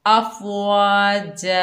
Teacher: आगे देखिए गोल सर्कल आ गया, यहाँ पर वक्फ करेंगे अफ़वा जा। वक्फ की हालत में दो ज़बर की तनवीन अलिफ मद्दा में बदल जाएगी, यानी एक ज़बर ख़त्म हो जाएगा, हम एक ज़बर पढ़ेंगे तो ये अलिफ खाली है, इससे पहले ज़बर आएगा तो ये अलिफ मद्दा बन जाएगा अफ़वाजा।